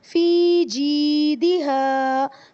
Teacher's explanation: فی کو لمبا کر رہے ہیں یا مدہ کی وجہ سے، جی کو لمبا کر رہے ہیں یا مدہ کی وجہ سے، دال کو جلدی پڑھ رہے ہیں کیونکہ یہ حرکت ہے، اور ہا کو لمبا کر رہے ہیں الف مدہ کی وجہ سے.